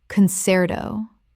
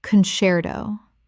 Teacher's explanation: Three syllables. The C before E makes a CH sound in Italian, which English has kept.